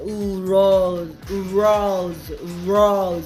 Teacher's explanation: R은요 입을 우 해보세요. 우 하고요. 그 다음에 혀는요 최대한 뒤로 이렇게 접듯이, 그러니까 입천장 쪽으로 이렇게 가는 거겠죠. 꺾이듯이 마치 어떤 이런 느낌이죠.